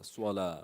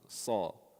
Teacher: there's difference in lightness and heaviness and it's coming from the tongue not from the lips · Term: heavy letters